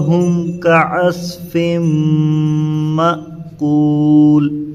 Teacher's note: تو یہاں پر میم ساکن کا اظہار ہوگا، آپ یہاں غنہ کر رہے ہیں، یہ نہیں ہوتا ہے